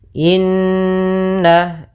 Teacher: ada bacaan gunah yaitu kita panjangkan dua harakat